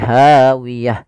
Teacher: Nah, sama di sini ada huruf ta yang diwakafkan, maka kita ganti dengan huruf H